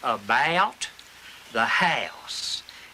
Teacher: We also have our way of saying OU. That differentiates us from other people. For us, that is a triphthong.